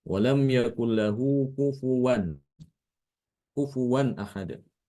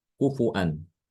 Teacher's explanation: mengganti wau itu dengan Hamzah